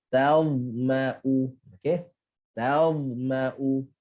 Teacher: ta bawa ke arah senyum sebab dia nipis. Dha tak senyum sebab dia tebal.